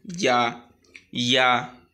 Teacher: আর ইয়াটা 1 আলিফ পরিমাণ টেনে পড়ব।